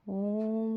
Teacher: ओ के बाद और म से पहले जो ध्वनि निकली वही हमारे पलुत स्वर है